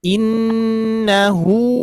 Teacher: Silah itu adalah huruf domir ketika diwasalkan menjadi qasirah. Dibaca dua harakat. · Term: silah qasirah